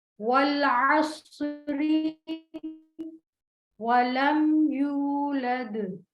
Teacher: वाव होंठों को मुकम्मल गोल करने से वाव का मखरज अदा होता है. बा होंठों के अंदरूनी गीले हिस्सों को आपस में मिलाकर अदा करते हैं.